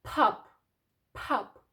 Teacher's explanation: Але всередині і на кінці слова п звук у нас невибуховий.